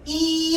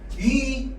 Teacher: 이 발음하면 위 소리보다 이 소리가 앞으로 좀 더 나가 있어요. 이가 좀 더 앞에 있거든.